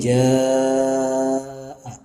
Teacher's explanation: Ini mad tabi'i kemudian bertemu dengan hamzah dalam satu lafaz. Ya. Ini panjangnya adalah 5 harokat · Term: mad wajib muttasil